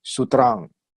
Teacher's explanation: So we don't pronounce with M, sutram. Pronounce with vibrate, nasalized, sutram